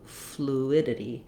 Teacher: we again have second syllable stress, but there's no consonant at the start of this syllable. And this letter U just says oo.